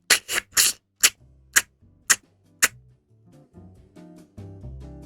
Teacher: air is being sucked in through the molars the teeth at the sides of the mouth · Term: lateral click